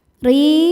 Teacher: huruf ro dibaca tarqiq sebab ro berharakat kasrah. Cara bacanya ro dibaca tipis. Ri madnya adalah mad thobi'i zohiri sebab ada ya sukun sebelumnya baris kasrah.